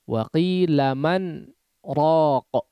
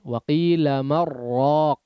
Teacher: Harus disaktah sehingga ya dibaca izhar, jelas nunnya.